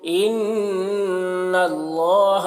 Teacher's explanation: ان نون مشدد غنہ ہوگا ، اللہ کو پر پڑھیں گے، علی لام میں کھڑا زبر